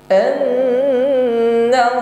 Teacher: كما يحلفون لكم ويحسبون أن nun tasydid, ada ghunnah wa syaddadah, ya, sautun yakhruju minal khaysyum, ada bunyi yang keluar dari rongga hidung, bunyi dengung, tingkatan dengungnya akmal, dengungnya paling sempurna, maka tahan terlebih dahulu dan dengungkan.